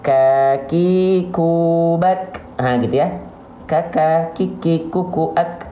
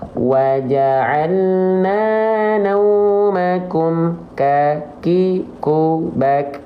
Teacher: sifat nafasnya Hanya berupa percikan percikan nafas saja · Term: hams